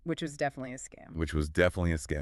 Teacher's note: The low pitch says, I know this for a fact. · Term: big pitch drop